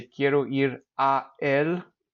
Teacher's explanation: You kind of get this sort of guttural stop when you say two vowels together like that when they're two separate words.